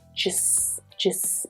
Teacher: So just is unstressed. You just hear the schwa. Just Just. And hear how the two words actually come together.